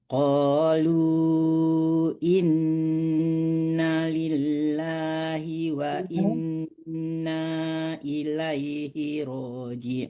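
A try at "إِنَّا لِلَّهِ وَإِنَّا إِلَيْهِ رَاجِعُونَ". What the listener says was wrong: Innanya panjang. Innanya panjang.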